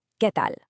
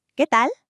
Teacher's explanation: keeping that pure e sound and that crisp a sound